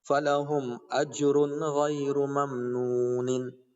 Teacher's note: نون کی آواز کو ناک میں غنہ نہیں کرتے بلکہ جلدی سے پڑھ کے اظہار کر کے آگے بڑھ جاتے ہیں. نون کی آواز کو بس اظہار کرے ظاہر کر کے آگے بڑھ جائیں گے.